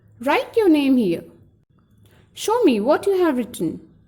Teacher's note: There is a fall of pitch in the end of the sentence.